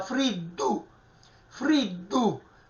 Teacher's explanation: In questo caso, ecco, questo è un raddoppiamento di consonante, cioè la D semplice, non cacuminale, si raddoppia e diventa friddu